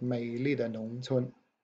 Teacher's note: The pinyin is DE, no tone. It's got a neutral tone.